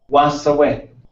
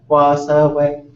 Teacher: The wa is higher than the other ones, but those are all high tones. We would write those all as high tones.